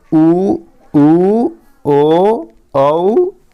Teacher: पश्च स्वर जीभ का पीछे वाला भाग से उच्चारण करते हैं